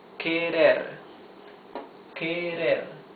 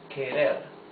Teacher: the R is the soft sound of the R because it's not at the beginning of the word and because it is not doubled. It is not double R.